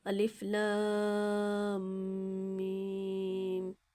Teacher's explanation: ان تینوں حروف کو الگ الگ ادا کیا جائے گا، اور میم کے اوپر چونکہ تشدید ہے یعنی مشدد ہے، میم میں مشدد ہے، تو پہلے والے لام کے ساتھ اس کو ملا کے پڑھا جائے گا، اور لام میم دونوں کو کھینچ کے پڑھنا ہے۔ تو جو بڑی مد ہوتی ہے اس کو ہم تقریباً 4 سے 5 الف کے برابر کھینچتے ہیں